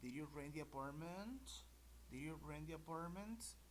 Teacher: Ok, al final es ascendente.